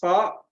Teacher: ujung lidah hampir bertemu gigi seri